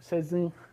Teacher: So you have to nasalize the e.